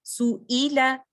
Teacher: हमजा भी bottom of the throat से आता है, हमारे वोकल कॉर्ड से आ रहा है, deepest part of the throat से आ रहा है जो कि क्लोजेस्ट टू द चेस्ट है।